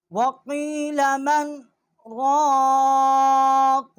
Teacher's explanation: آواز ہم نے روک لی ہے، سانس جو ہے وہ جاری رہا ہے. سکتہ کا جو طریقہ ہے وہ یہی ہے کہ آواز روک لی جائے گی، جتنا 1 الف جو کھینچا جاتا ہے، 1 الف جتنا آواز روک لی جائے گی، اور سانس جو ہے وہ جاری رہے گا.